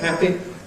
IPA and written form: ˈhæpi (happy)